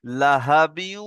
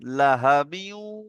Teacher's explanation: এখানে ঈদগামের নাকিস গুন্নাহ এক আলিফ গুন্না হবে।